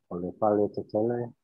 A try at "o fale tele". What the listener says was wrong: No le. It's just o.